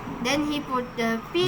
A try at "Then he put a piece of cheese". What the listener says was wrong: Jangan ditahan T-nya, kesatuan. Put a. Then he put a piece of. Jangan piece of, lama. Then he put a piece of cheese in his pocket.